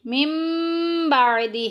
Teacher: غنہ کر کے پڑھیں گے اور نون کی آواز کو میم سے بدل دیں گے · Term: اقلاب